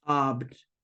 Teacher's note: I don't think you really hear the B that much, but you need to at least try to make, because you make them like, you go from the B into the T right away, so it almost sounds like you're not saying it, but your mouth should be trying to say it.